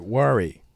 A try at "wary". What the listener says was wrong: Wary. Wary, not worry. Like Because if you said, it sounded like you said W-O-R-Y.